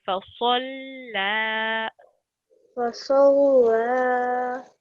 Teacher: So only the sad here is thick. The lam is not.